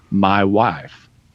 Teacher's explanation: you start with the broader ah, but then it transitions into the I sound